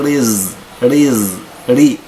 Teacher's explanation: الراء مرققه بسبب انها مكسوره